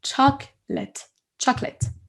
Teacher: On dit chocolate. Il y a un O qui disparaît.